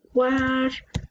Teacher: La U es una vocal débil junto con una vocal fuerte. Entonces estas dos vocales se juntan y hacen una sola sílaba. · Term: diptongo